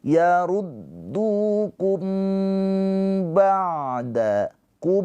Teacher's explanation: Mim sukun bertemu dengan huruf ba ini adalah ikhfa syafawi. Mimnya ini ditahan dua harakat.